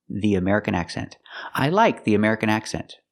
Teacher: use a long e because it's before a vowel